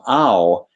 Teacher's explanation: in the sound ow you notice there's vowels in there it's like a diphthong there's ah oh and whoo